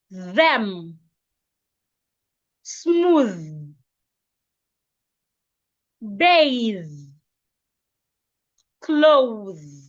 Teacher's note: your tongue must be outside and ensure you can feel vibration